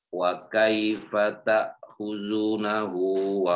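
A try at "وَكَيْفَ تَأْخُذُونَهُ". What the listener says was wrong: Nah, zunya kelihatan kedengaran enggak panjang, ta'khuzunahu. Nah, coba diperhatikan lagi Pak, zu apakah ada mat setelahnya atau tidak ada mat?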